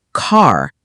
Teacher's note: American accent often uses a strong R sound